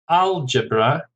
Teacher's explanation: Algebra, stress on the first syllable, 3 syllables